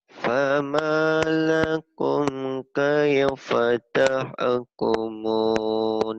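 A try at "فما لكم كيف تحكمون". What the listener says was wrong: Ternyata kamu masih menahan gitu. kalau yang kosar nggak boleh ditahan. nahannya di mad-mad aja di sini nih ya nih. Ma ya sama ini nggak ada yang panjang, ujung aja nih.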